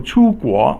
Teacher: 出 is the first tone or flat tone, and then 国 is the rising tone.